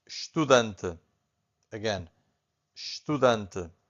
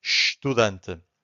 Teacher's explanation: the only thing that you can hear from the first syllable, it's a sh